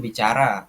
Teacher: Tekanan di satu suku kata seperti ra.